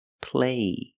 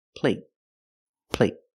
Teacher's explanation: there's no stop T so the vowel is longer · so the vowel is longer here play compared with plate plate the stop T makes a vowel shorter